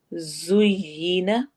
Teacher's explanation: ज सीटी वाले हरूफ में से है, सीटी की आवाज होगी